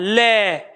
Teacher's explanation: ल का जब उच्चारण कर रहे हैं जीभ कहां लग रही है दांतों पे लग रही है